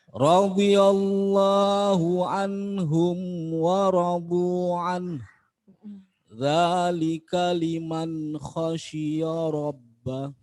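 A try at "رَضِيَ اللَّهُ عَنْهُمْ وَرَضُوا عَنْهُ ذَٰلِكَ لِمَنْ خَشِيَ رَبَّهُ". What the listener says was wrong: Tapi tadi mad jaiz sama mad wajibnya kurang panjang sedikit nggih. Mungkin nafas nggih.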